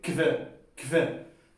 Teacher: Entonces se pronuncia como una K. La H se transforma en una K.